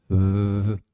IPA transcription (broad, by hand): β